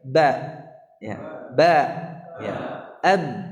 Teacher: Adapun sifat, sifatul huruf itu adalah cara bagaimana huruf itu keluar dari makhrajnya. Jadi kalau kita tahu di mana makhraj ba ya, kita tahu syafatain ya, dari kedua bibir